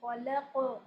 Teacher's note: اب یہ کہ یہاں مدہ ہے تو آپ کہیں گے الذی, یا یہ مدہ ہے اس کو 2 کاؤنٹس تک لمبا کریں گے. خلق, خا موٹا پر پڑھیں گے, لام باریک پڑھیں گے. لام کو نہیں موٹا کر دیں گے قاف کی وجہ سے, اور قاف پہ قلقلہ کریں گے اور قلقلہ بھی مستعلیہ ہی ہوگا, موٹا.